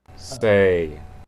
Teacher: I just added a little silence between the s and the a.